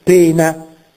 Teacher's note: la e derivata da oe la e lunga e chiusa in italiano da poena viene pena con la e chiusa da